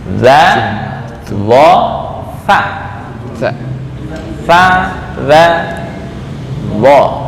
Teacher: Zal sa dha satu makhraj, ujung lidah dengan gigi atas.